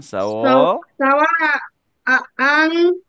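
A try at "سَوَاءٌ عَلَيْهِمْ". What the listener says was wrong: সাওয়াউন, দেখো তানউইন 2 পেশ। হ্যাঁ, স্পেলিং করো। আইন জবর আ, লামিয়া জবর আ।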